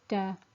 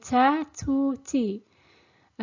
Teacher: the articulation point is the tip of the tongue which touches the roots of the upper incisors